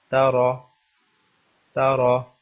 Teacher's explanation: تو را کی تفخیم کا اصول یہ ہے کہ اگر را کے اوپر زبر ہو یا پیش ہو تو اس را کو موٹا کر کے پڑھا جائے گا، اس را کو تفخیم کے ساتھ پڑھا جائے گا۔ جیسے تارا، تارا، اس کو تارا نہیں پڑھیں گے بلکہ تارا موٹا کر کے پڑھیں گے، اس لیے کہ اس را کے اوپر زبر ہے۔